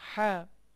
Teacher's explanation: হা একেবারে কণ্ঠনালীর ভিতর থেকে আসবে, হা, হাওটা একটু চেপে আসবে, হা।